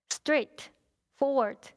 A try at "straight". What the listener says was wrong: Straight. You sound like strict. My legs strict. I said, what? My legs strict?